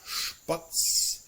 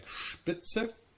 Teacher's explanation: So in this case, even though we don't have the SCH or SCH, the combination of ST and SP are pronounced very much like a sh followed by the t or by the p sound